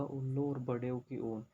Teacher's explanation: इन दोनों का उच्चारण स्थान होता है ओष्ठ यानी कि होठ